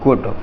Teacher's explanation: ये double O ह्रस्व स्वर में ऊ की आवाज़ बोलेगा, इसको बोलेंगे गुड।